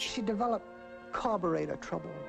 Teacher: we'll stress the first word first word will have the highest pitch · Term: compound noun